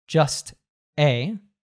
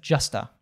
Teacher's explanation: "Just a" ,turning that - we talked about the schwa sound earlier - so turning that a into a schwa